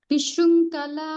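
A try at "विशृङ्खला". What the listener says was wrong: ಇನ್ ದಿಸ್ಕೇ is A ಮಹಾಪ್ರಾಣ here so ವಿಶೃಂಖಲ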